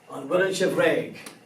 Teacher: So the word is F-U-I-L, but when you put the question together, you have to put a B with a shivu on it, B-H-F. Of course, the F now disappears because you have eclipsed it with another consonant